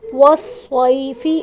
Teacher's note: یا ساکن ہے، اس سے پہلے زبر ہے تو یائی لین، اس کو نرمی سے ادا کریں گے۔